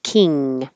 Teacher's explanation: touching the top of the mouth dingaling King another ing where the back of the tongue goes very high touches King and don't release it and have a king just